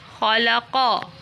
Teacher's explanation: خا زبر خا، لام زبر لا، خالا، قاف زبر قا، خالاقا۔ یہاں خا اور قاف کو پر پڑھیں گے۔